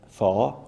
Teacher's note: instead of saying fower, they say far with a northern vowel